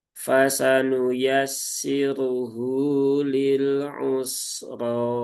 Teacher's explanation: Ro-nya juga dibaca dengan menebal, yaitu dengan cara diangkat pangkal lidahnya dan dipanjangkan 2 harokat ya. Cukup 2 harokat saja. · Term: tafkhim